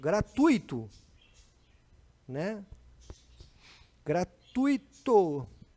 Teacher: A sílaba tônica aqui, ó, do tu, cai na vogal U. Não existe hiato aí.